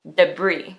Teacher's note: the actual pronunciation is debris with a hard I sound and no S sound